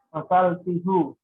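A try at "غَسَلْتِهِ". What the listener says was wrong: Bukan gosaltihu. Nah, ini seperti ini karena dia sebelumnya kasroh, dibaca gosaltihi ya. Gosaltihi. Jadi bukan gosaltihu, tapi gosaltihi.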